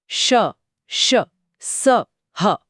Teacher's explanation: नाम से ही स्पष्ट है, ऊष्मा यानी गर्मी। इन ध्वनियों में हवा को एक बहुत संकरी जगह से रगड़ खाते हुए बाहर निकलना पड़ता है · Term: उष्म व्यंजन, ऊष्म व्यंजन